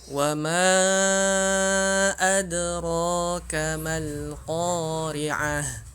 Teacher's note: mim di sini dibaca panjang karena dia di sini mad jaiz ketemu dengan hamzah. Maka dia panjangnya kita pakai 4.